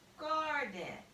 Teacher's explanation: Remember, accent means to say the word louder, longer, and stronger. So when you say garden, you're actually saying the first syllable louder, longer, and stronger.